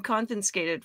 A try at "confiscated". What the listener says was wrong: Confiscated. There aren't two ends there. It's confiscated.